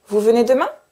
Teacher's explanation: Donc je fais une phrase classique, mais je fais une intonation qui monte.